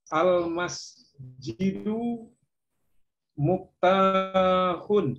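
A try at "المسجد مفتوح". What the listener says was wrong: Bukan. Mimnya dibaca fathah ya. Bukan. Dibaca fathah mimnya berarti maftuhun.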